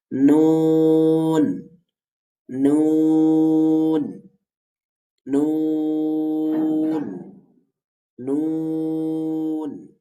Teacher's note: জিহ্বার আগা তার বরাবর উপরে তালুর সঙ্গে লাগিয়ে হচ্ছে নুন উচ্চারিত